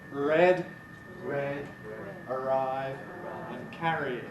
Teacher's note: Mostly English R is what we call an approximant, that is a sound which you can get best, I think, by imitating Americans.